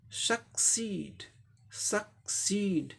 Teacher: पहला सिलेबल साधारण तरीके से बोलेंगे, दूसरे को जोर दे के बोलेंगे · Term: सेकंड सिलेबल पे स्ट्रेस